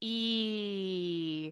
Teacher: your tongue is relatively front and high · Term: E vowel